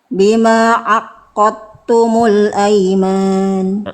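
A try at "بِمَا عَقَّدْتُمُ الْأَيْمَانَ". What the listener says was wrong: Ainnya tegaskan lagi. Jadi ainnya kurang neken. Jadi kayaknya kayak hamzah. Bima aqadtumul aiman.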